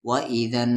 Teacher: نون پر یہاں تشدید ہے تو یہاں پر غنہ ہوگا، نون پر تشدید ہو یا میم پر تشدید ہو تو غنہ ہوگا۔